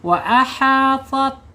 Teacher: saya keluarkan napas dengan suara ada sedikit mendesis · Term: sifat al-hamsu